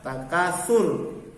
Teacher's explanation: Ketika berhenti, ro-nya dibaca tafkhim. Hukum bacaan ro di sini di ayat 1 adalah ro tafkhim. Ro yang dibaca tebal.